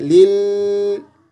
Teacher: दूसरे लाम है ना, क़लक़ला नहीं करना बल्कि खींचना है